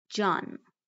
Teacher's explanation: Jan often turns into jun in conversational Persian.